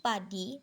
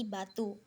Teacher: Perbedaan hanya pada getaran pita suara